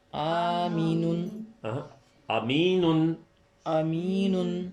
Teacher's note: پہلی الف معروف کی آدھی آواز ہے، دوسری یائے معروف کی پوری آواز ہے، اور آخری نون میں تنوین ہے.